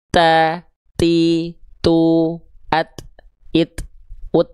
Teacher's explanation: Jadi dia ada percikan-percikan nafasnya.